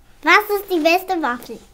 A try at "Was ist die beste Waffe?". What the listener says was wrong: Nein, Waffe, nicht Waffel. Waffe. Nicht zum Essen.